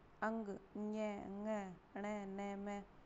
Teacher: अंग, ञ, ङ, ण, न, म का उच्चारण स्थान नासिका और ध्वनि नासिक्य।